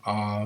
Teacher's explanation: you're holding onto that a sound just a little bit longer